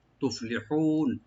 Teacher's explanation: তুফলিহুন লি বলবো, আর হাটাকে রাইট দিয়ে গলা মাঝখান থেকে হু, তুফলিহুন। আর নুন সাকিন হয়ে যাবে, এখানের মধ্যে আরজি হয়ে যাবে।